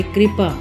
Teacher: कि आधा और र पूरा इस तरह से इसे माना जाएगा यदि अक्षर के पैर में ऋ की मात्रा हो तो उसका जो उच्चारण है वह री